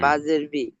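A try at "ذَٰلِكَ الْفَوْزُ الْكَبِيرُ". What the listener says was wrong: বাজে নয়, বা ইয়া রজের বীর। বীর নয়, বীর টান দিতে হবে, এ সাকিন ডান দিকে জেরিয়া মাদ্দা, আর ইয়া মাদ্দার কাছে থামছি, মাদ্দে আরি জকফি, 3 থেকে 4 আলিফ টান দিয়ে থামতে হবে।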